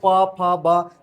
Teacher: जैसे बोलते हो प फ ब ये क्या होता है? ओष्ठ से होता है।